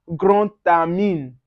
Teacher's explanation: Then now when you see D that's used in linking, we call it la liaison. The D changes to T.